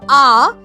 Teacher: মুখের মধ্যেকার হায়ের পরিমাণ সবচেয়ে বড়। আর জীভ তখন না সামনে না পেছনে। এটি কেন্দ্রীয় জায়গায় এবং ঠোঁটটাও না পুরোপুরি ছড়ানো না পুরোপুরি কুঞ্চিত বরং মাঝামাঝি অবস্থায় রয়েছে। তাই আটা হচ্ছে নিম্ন বিবৃত কেন্দ্রীয় মধ্যস্থ স্বরধ্বনি।